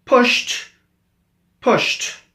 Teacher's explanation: the T sound is produced with unvoiced or voiceless endings